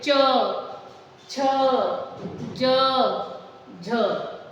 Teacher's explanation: च वर्ग को भी हम तालु से ही उच्चारण करते हैं